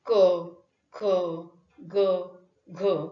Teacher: जिभेचा मागचा भाग मृदू तालव्याच्या दिशेने उचलून जी व्यंजन निर्माण होतात त्याला मृदू तालव्य व्यंजन म्हणतात.